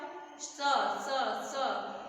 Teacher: जीभ हमारी दांतों से टच हो रही है तो इसको बोलेंगे दंत स।